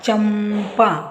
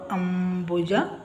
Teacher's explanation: ಸೊನ್ನೆ ನಂತರ ಪ ಬ ಭ ಬಂದ್ರೆ ಅದರ ಸೊನ್ನೆಯ ಉಚ್ಚಾರ ಮ